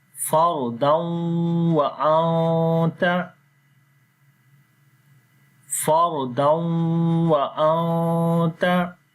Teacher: So as we say fardan, we make the nasal sound like we make ghunna, idgham with ghunna.